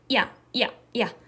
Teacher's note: 얘가 짧게 발음해야 돼. 즉, 이랑 굉장히 비슷한 소리인데 훨씬 짧게 발음하는 요 소리를 반모음 이라고 합니다 · 앞에 있는 이 이를 짧게 발음해야 돼요. 야. 얘가 짧게 발음해야 돼.